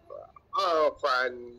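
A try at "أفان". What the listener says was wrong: Panjang sikit.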